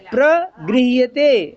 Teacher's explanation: देखो वजन नहीं देना, प्रग में प्रग नहीं आना चाहिए, प्रगृह्यते फिर प्रग बोले, प्रग में गा नहीं सुनाई देना चाहिए